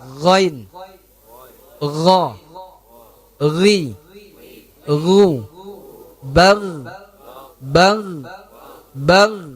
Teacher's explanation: Terangkat pangkal lidah ketika kita mengucapkannya. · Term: huruf ghain